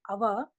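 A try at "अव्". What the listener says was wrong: Av, not Ava. If you supply the vowel, then it becomes different, totally different. It is Av only, not Ava.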